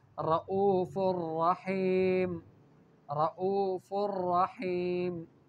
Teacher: رؤوف اور رحیم میں غنہ نہیں کریں گے اس لیے کہ بعد میں را آیا ہے، اور را ان حروف میں سے ہے کہ اس سے پہلے نون ساکن ہو، تو پھر وہاں پر ادغام کیا جائے گا، غنہ نہیں کیا جائے گا۔